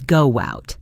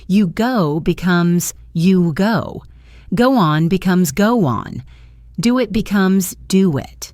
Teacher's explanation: if a word ends in a vowel sound like oo or o, we often insert a small W sound